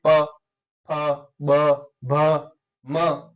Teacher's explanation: जो प्राण वायु है वो होठों पे आकर के रुक जाती हैं और फिर उच्चरित होती हैं। जैसे आप बोल के देखिए प फ ब भ म, तो इसमें होठ पर प्राणवायु रुकने के बाद में आपकी ये ध्वनि उच्चरित हो रही है।